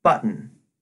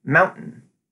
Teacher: The T becomes a glottal stop, leading to something closer to button. Notice there was no T sound there.